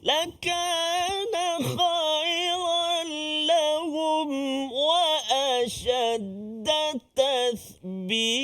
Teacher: itu huruf tha dan ta dekat ujung tu mad iwad kan. Mesti 2 harakat saja, jangan panjang.